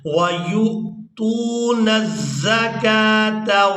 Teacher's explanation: اب یہاں پر ہم نے واو کو ادا نہیں کرنا، حمزہ کو ادا کریں گے، یا کو اس حمزہ ساکن کے ساتھ ملاتے ہوئے جھٹکے کے ساتھ ادا کریں گے